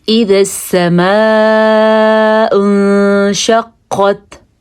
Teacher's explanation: قاف پہ قلقلہ اور قاف حروف مستعلیہ میں سے بھی ہے